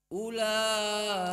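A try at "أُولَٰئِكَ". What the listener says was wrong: Ini terlalu tebal lamnya. Ula. Masih la. Nah, ini sampai ke imalah anak ini. Ula. Tipiskan lagi. La, jangan la. La.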